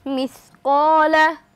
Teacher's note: জবরের বাম পাশে খালি আলিফ মাদের হরফ এসেছে আমরা এক আলিফ টান দিয়ে পড়ব